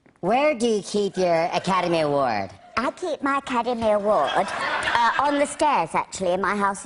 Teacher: producing an alternative voice with a very high pitch